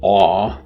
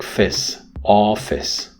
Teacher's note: The vowel aw has more length than the vowel in is